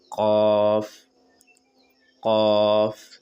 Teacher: जबान की जड़ यानी कि जबान के आखरी वाला हिस्सा जो तालू के नरम वाले हिस्से से सटाकर काफ अदा होता है। नरम वाला हिस्सा यानी कि जबान का जो आप आखिर में देखेंगे अंगूठा लगा के देखें।